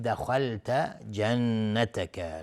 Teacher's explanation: نون مشدد 2 حرکت غنه میدیم